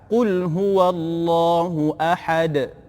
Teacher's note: Kemudian pada kalimah ahad, ahad ada qalqalah ujungnya